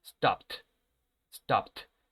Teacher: esta ed se va a pronunciar como si fuera una T, recuerden. ¿Por qué? Porque el último sonido es de la consonante P y este sonido no suena.